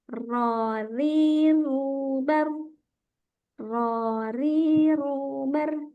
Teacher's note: Jadi takrirnya hanya satu saja, tidak terlalu banyak, bukan yang ro, ro.